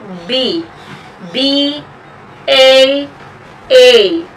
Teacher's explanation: the point of articulation of ba is bringing lips together joining lips together actually for the letter B